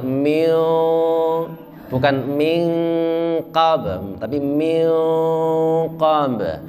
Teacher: Min qablihim, nun mati ketemu dengan qaf. Qaf itu sifatnya tebal, maka ketika ikhfa itu nunnya langsung menuju ke tebal.